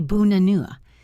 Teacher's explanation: The first and last A become the schwa sound.